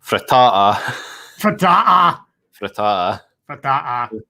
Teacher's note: Because you've got that glottal stop in there